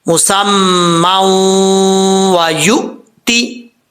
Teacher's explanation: نون تنوین کے بعد واو آ رہا ہے حروف جر ملون میں سے، تو یہاں پہ ادغام ہوگا غنہ کے ساتھ